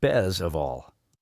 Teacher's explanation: did you notice that the t sound almost disappears sometimes? For example, in the phrase best of all, it can sound like bez of all.